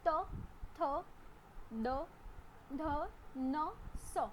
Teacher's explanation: દંતવ્ય દાંતથી બોલાતા વ્યંજનો. દાંતમાં જીભ અડે છે, સ્પર્શે છે ને પછી શબ્દ નીકળે છે.